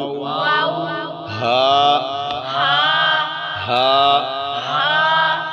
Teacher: انتہائی حلق سے یہ آواز آنے چاہیے، حلق کے آخری حصے سے